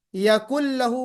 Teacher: नून साकिन के बाद लाम आ गया तो हमने यकुल लहू पढ़ा, उस नून को लाम में मर्ज कर दिया